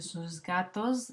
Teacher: en sus gatos esta s sería Sonora porque va seguido de ga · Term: sonorización